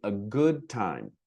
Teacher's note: We just barely touch it and we mainly hear the T. So T and D's merge into one basic sound